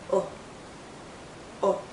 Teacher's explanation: is a short vow sound it's also more a relaxed sound our lips are still rounded but it's not a tight Circle it's a relaxed Circle